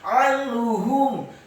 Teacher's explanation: Kata anhum, ainnya ditekankan fathah satu harokat. Nun yang sukun bertemu dengan huruf ha. Hukum bacaannya adalah ilhar halqi atau ilhar hakiki, dibaca jelas. Anhum. Kemudian ha-nya dibaca tafkhim dhammah satu harokat, mimnya dibaca sukun.